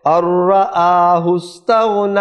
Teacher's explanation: ادغام ہوگا، نون نہیں پڑھا جائے گا، غنہ نہیں ہوگا